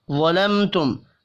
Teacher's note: اب یہاں دو میم ساکن ہیں، دونوں پر اظہار شفی ہوگا، غنہ نہیں ہوگا